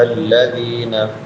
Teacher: ذال نرم ہوگا اور ذال کے بعد یائے مدہ ہے یا ساکن ما قبل کسرہ ہے.